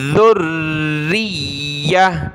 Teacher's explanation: گول تا پر جب وقف کرتے ہیں تو ہا بن جاتی ہے